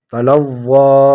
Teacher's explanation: تلظى ایک الف کی مقدار اس کو کھینچیں گے۔